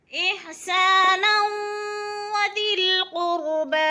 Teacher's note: دو زبر تنوین کے بعد وہ مشدد آ گئی ہے تو ادغام کریں گے، یعنی نون کو واو کے ساتھ مدغم کر کے ملا کر پڑھیں گے